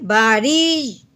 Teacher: رو کے نیچے زیر ہے اس لیے ہم نے اس کو بری کرنا ہے، تو یہ مشدد ہے یا تو اس کو ہم نے ہلکا سا دبانا ہے، ٹھیک ہے۔